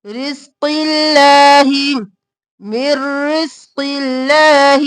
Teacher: اللہ کا لفظ باریک کیونکہ پہلے زیر ہے